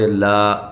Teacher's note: کھڑی زبر ایک الف کے برابر لمبا کیا جائے گا